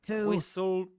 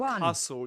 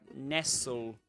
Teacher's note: In all these words, you don't pronounce the T.